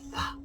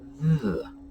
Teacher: And if you will recall, last week when we spoke about our voiced and voiceless dental fricatives, those are our TH sounds, we discussed thorn being the voiceless fricative, th, as opposed to ev being the voiced, th